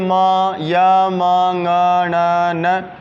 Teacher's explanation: पांच प्रमुख ऐसे वर्ण मेरे पास हैं जिनका उच्चारण मुख के साथ-साथ नासिका से भी होता है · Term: पंचम वर्ण